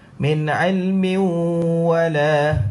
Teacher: saya baca pula tanwin dimasukkan dalam waw. Min ilmi. Saya masukkan tanwin di dalam waw. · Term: idgham ma'al ghunnah